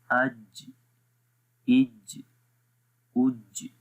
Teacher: قلقلہ کی بھی آواز ہو رہی ہے اور جیم کے مخرج کا بھی بالکل کلیئر پتہ چل رہا ہے